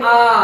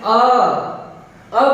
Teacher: दीर्घ स्वर मतलब मूल स्वर से इसका उच्चारण में थोड़ा सा समय ज्यादा लगता है। जैसे अ बोलते वक्त कम समय लगता है, लेकिन हम दीर्घ स्वर का उच्चारण करेंगे आ।